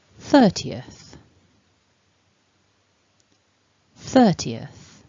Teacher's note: similar to the stress change that we had for the word 20th, we also stress that beginning in 30th